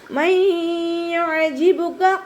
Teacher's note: നൂനിൻ്റെ സൗണ്ടിന് അവിടെ കേൾക്കൂല, പൂർണ്ണമായിട്ടും യായിലേക്ക് ലയിപ്പിച്ചു കൊടുക്കുക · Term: ഇദാം ബിഗുന്ന